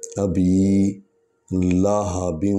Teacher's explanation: ابی کو اس لیے لمبا کر رہے ہیں تھوڑا سا کیونکہ با کے آگے یا ہے